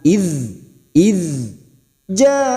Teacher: Idh huruf dzal sukun, bukan qalqalah, kita tahan.